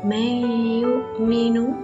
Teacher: Yang kedua adalah مَيُؤْمِنُ, nun sukun bertemu dengan ya. Hukum bacaannya adalah idgham bi gunnah. Cara membacanya ditahan 2 harokat atau 2 ketukan.